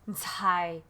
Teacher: It's a t, and so you say the t sound with the h sound. So it's Thai. So it's a breathy type of sound. So Thai, Thai is daughter, or daughter, or girl, because but usually daughter, because somebody can go, oh, Thai, can you do this for me?